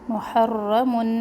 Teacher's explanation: محرم را تشدید کے ساتھ ہے تو اس کو ہم 2 دفعہ پڑھیں گے. محرم موٹا بھی پڑھنا ہے را کو.